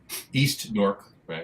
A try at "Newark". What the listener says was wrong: Newark. It's one syllable. Newark.